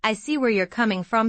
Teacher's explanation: Stress on coming to show you understand his perspective. Notice the intonation rises on coming and then falls, that shows sincerity.